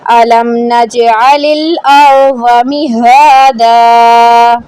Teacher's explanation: جیم ساکن پہ ہمیشہ قلقلہ ہوگا، ٹھیک ہے، یہ جیم قلقلہ کا حرف ہے، قلقلہ حرف کو ہلا کر پڑھنا ہے